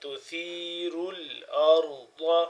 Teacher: را کو بھی موٹا اور اس را کو بھی موٹا پڑھیں گے اور ضاد بھی موٹا ہے